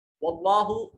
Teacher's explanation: جلالت کا ما قبل مفتوح ہے تو اس میں جلالت کو مفخم موٹا پر کر کے پڑھا جائے گا